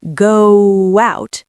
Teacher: your lips naturally form a W sound in the middle. Go out. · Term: glide